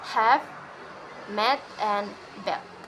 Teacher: is mid low from unrounded fowl this fowls is articulated at the tongue in a mid low position using the front part of the tongue and with unrounded lips